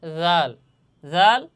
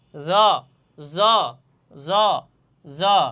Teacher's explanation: জাল জ যদিও উচ্চারণের স্থান একই স্থান, কিন্তু উচ্চারণ ক্ষেত্রে শব্দটা একটু নরম এবং একটু শক্ত হবে, কঠিন হবে। জ, জ, জ, জ, আর এটা জাল, জাল, জ, জাল, জ, এভাবে জ, জ, জ, জ, এভাবে আপনারা বারবার মস্ক করে থাকবেন।